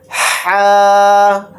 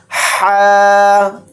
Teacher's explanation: हा इसको हलक से निकाल कर पढ़ेंगे और यह हा खाली होता है और इसको बड़ा हा भी